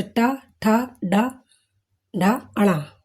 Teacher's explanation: जीभ की नोक को ऊपर के तालु के आगे वाले हिस्से से लगाकर बोलेंगे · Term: मूर्धा